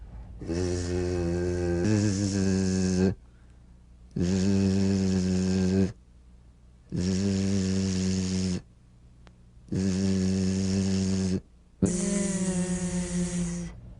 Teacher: So feel a smooth, strong vibration in the teeth and in the front of the tongue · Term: Z sound